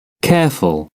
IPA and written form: ˈkeəfʊl (careful)